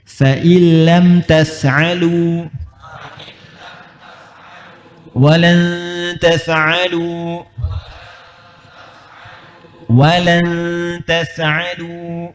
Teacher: maka nunnya nggak usah bunyi, langsung ke huruf lam atau ra-nya